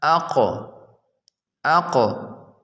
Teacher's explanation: qaf comes out from the root of the tongue and the soft palate، زبان کی جڑ اور حلق سے، جیسا اقو۔